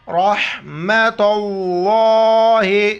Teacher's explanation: را پر بھی زبر را کو موٹا کر کے پڑھیں گے